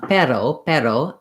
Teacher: in Spanish, pero has that flap for the R. So when you're saying a word like hiring in English, if you have difficulty between hiding and hiring, it's probably because you associate that flap with the R sound, and they may sound the same to you, hiding.